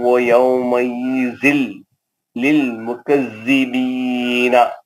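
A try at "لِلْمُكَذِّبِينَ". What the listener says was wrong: ایک منٹ آپ روکے تو آیت کے ختم پہ اس کا زبر زیر پیش نہیں پڑھنا مکذبین نہیں پڑھنا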